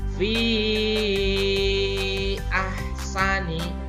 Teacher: dibaca panjang 4-6 harokat karena ada mad tabi'i bertemu dengan huruf hamzah, tidak dalam satu kalimat, maka dibaca 4-6 harokat. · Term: mad zaid munfasil